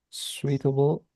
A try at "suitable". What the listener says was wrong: No, not sweet. without the I in this case. Like if it wasn't there.